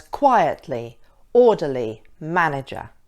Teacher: If it's being used as a verb, the stress is on the second syllable, present, export, suspect. 3-syllable words that end in er or ly. With these, often the stress is on the first syllable